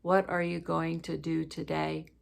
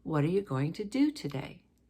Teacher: The what, you, go, to, and day are all kind of one pitch. The R, the ing of going, the to of today are a little bit higher, and do is the highest. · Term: change in pitch